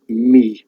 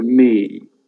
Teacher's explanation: a Welsh person would say me. There's just one sound there